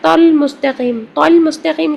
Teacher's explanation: قاف کے ساتھ ہم لام کو ملا رہے ہیں اور حمزہ وصلی نہیں پڑھا جا رہا